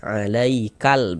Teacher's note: kalau alif lam qamariah huruf lamnya dibaca izhar terbaca jelas nih